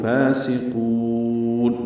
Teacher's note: منہم فاسقون، فا کو دو حرکات لمبا کرنا ہے، کھڑا زبر ہونے کی وجہ سے. سین باریک، قاف پر واو مدہ ہے اور نون ساکن پہ وقف اظہار ہوگا، لمبا کریں گے قاف کو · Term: مد عارض سکون